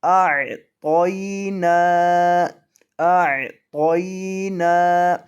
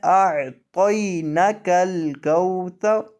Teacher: نون کو آپ نے لمبا کرنا ہے، نون پر آپ نے مد کرنا ہے، اور مد آپ نے ایک الف کے برابر کرنا ہے، اس کو ایک الف کے برابر لمبا کرنا ہے۔